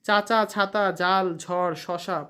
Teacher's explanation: জীভের ডগা খানিকটা প্রসারিত হয়ে শক্ত তালুর কাছে বায়ুপথে বাধা সৃষ্টি করে সেগুলোকে তালব্য ব্যঞ্জন বলে চাচা ছাতা জাল ঝড় শসা প্রভৃতি শব্দের